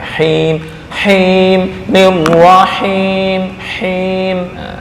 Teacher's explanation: Ada ha, ain itu di tengah tenggorokan.